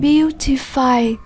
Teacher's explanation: Beautify, nhấn âm tiết số 1